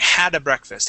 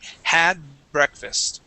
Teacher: you had added an uh sound in in between there and it wasn't a pause like how you you know we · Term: extra sound